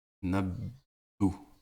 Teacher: Nabbo. Et le petit W, en fait, ça fait durer le son, ça le prolonge. Ça double, en fait, le son.